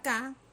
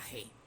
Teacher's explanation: tenemos las oclusivas velares sordas que serían la k y la Sonora que sería la g